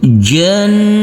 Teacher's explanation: huruf nunnya kita samarkan dan kita dengungkan persiapan masuk ke huruf ta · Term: Ikhfa